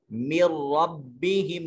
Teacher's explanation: نون کی آواز بھی نہیں آئے گی، اس کو ادغام تام کہتے ہیں